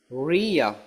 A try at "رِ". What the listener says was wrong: ரீ ரீயண்டா பின்னுக்கு போய் திரும்ப ரீ. அங்கதான் பிரச்சனை. ரீ ரீ. நாக்க சரியா இடத்துல பட வைங்க. நாக்குட மேல் பரப்ப தொண்டையில முன்னுக்கு பட வைங்க. ரீ. நீங்க வெளியே வைங்க, வீட்ல கட்டி வைங்க, பிரச்சனை இல்லை. பட வேண்டியது மேல் பகுதி மட்டும்தான். நுனி படப்படாது.